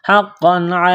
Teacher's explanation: قاف میں سختی کریں گے، دبائیں گے تشدید کی وجہ سے، قاف کو موٹا کرنا ہے۔ دو زبر تنوین ہے، تنوین کے بعد عین ہے، حروف حلقی ہے تو تنوین پر غنہ نہیں کریں گے، آواز ناک میں نہیں چھپائیں گے۔ · دو زبر تنوین ہے، تنوین کے بعد عین ہے، حروف حلقی ہے تو تنوین پر غنہ نہیں کریں گے، آواز ناک میں نہیں چھپائیں گے۔ لام کو لام کے ساتھ ملانا ہے، تا میں سختی کریں گے، دبائیں گے تشدید ہے، تا کے اوپر قاف کو موٹا کرنا ہے۔